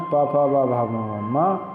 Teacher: ओष्ठ, ओंठों से वर्ण बोले जाते हैं, ऊ स्वरों में, व्यंजन में प फ ब भ म म, मतलब ओंठों को मिलाकर जब तक नहीं खोलेंगे तो इनका नाम नहीं आ पाएगा, उनका चरण नहीं होगा, और इनका नाम हो जाएगा, इन वर्णों का सामूहिक नाम हो जाएगा ओष्ठ्य।